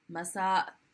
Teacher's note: that apostrophe just represents the hamza which is the uh sound it's the glottal stop